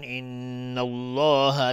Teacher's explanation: لفظ جلاله مفخم یا غلیظ تلفظ میشه، استعلاء حکمشون قبلش فتحه اومده.